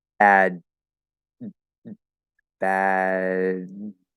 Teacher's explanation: the voice continues after the vowel, after I go into the D position, and then you need to sort of catch the voice as you're stopping it. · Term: voiced stop